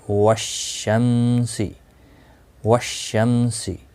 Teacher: یہاں پر دیکھیں آپ، پہلے الف اور لام ہے تو لیکن ان کو نہیں پڑھا گیا ہے، ڈائریکٹ شین کے ساتھ واو کو ملایا گیا ہے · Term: حروف شمسی